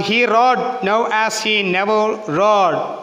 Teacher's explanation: Example ആണെങ്കിൽ, come on ഹി റോഡ് നൗ ആസ് ഹി നെവർ റോഡ്. ഇവിടെ റോഡ് stress ചെയ്യേണ്ടതാണ്. ഹി അൺസ്ട്രെസ് ആണ്. നൗ അൺസ്ട്രെസ് ആണ്. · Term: സ്ട്രോങ് സ്ട്രെസ്